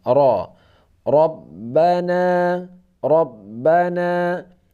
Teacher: agak di antara a dan o, bukan ke o dan bukan ke a, bukan Arab, bukan rob. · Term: tebal